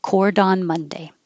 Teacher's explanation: But if you say, I have to go to court on Monday, it will sound like cordon. Now the T is connecting, but it's also changing to a D because it's between two vowels.